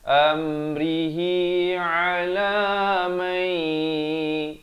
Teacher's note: Idgham bi gunnah di sini. Daripada man jadi may yasha'u min. Umin dan masuk saja min, jangan panjang.